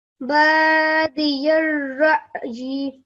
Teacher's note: پہلے آخر پہ یا کے نیچے کسر کو لمبا نہیں کرنا